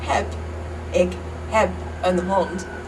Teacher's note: So, for example, the word heb, ik heb een hond, is spelled H-E-B, but instead of saying heb, like you would if you were saying hebben, you devoice the B and you turn it into a P